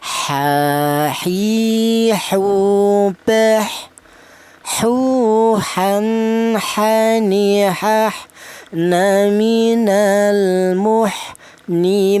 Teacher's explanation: huruf ha ini keluarnya huruf berasal dari tengah tenggorokan